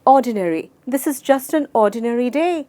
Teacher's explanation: हर syllable में, हर भाग में हमने कोई भी जोर या एम्फेसिस या स्ट्रेस नहीं डाला। सो इसको हम 4 सिलेबल्स में डिवाइड करेंगे, लेकिन कोई असाधारण स्ट्रेस कोई भी सिलेबल पे नहीं है।